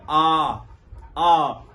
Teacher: विवृत स्वर, जिसमें मुख एकदम खुला रहता है